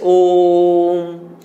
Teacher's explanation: ओ का जो उच्चारण किया हमने उसमें सामान्य उच्चारण से तिगुना समय लिया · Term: प्लुत